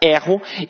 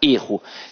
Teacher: o verbo tem a pronúncia aberta, erro, e que o substantivo tem a pronúncia fechada, erro.